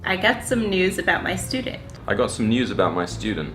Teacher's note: Can you hear the difference? The Americans just say ooh, but the English people add a y sound in there, and they say you.